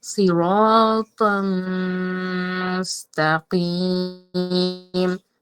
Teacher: তানভীনের উচ্চারণ না হয়ে সরাসরি মিমের সাথে মিলিয়ে গুন্না করে পড়তে হবে